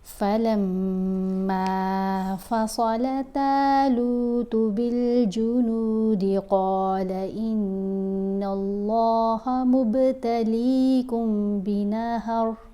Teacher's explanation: فلما فصل طالوت بالجنود قال إن الله مبتليكم بنهر فمن شرب منه فليس مني۔ یہاں ہم نے صاد، طا اور قاف ان کو موٹا پڑھنا ہے، کیونکہ عربک الفابیٹ میں 8 لیٹرز ایسے ہیں، 8 حروف ایسے ہیں جن کی آوازیں بھاری آوازیں ہیں، جن کو ہم نے موٹا پڑھنا ہوتا ہے۔